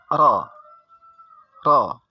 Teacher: huruf ra ini dibaca dengan ringan saja, tidak membaca dengan berat, sehingga membacanya cepat